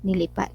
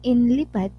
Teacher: ang i at n ay nagkakapalitan ng posisyon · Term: metathesis